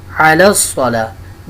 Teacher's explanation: اس لام کو ڈائریکٹ صاد کے ساتھ ملائیں گے